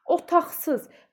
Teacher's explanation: Q-dan sonra samit gəldiyi üçün X tələffüz olunur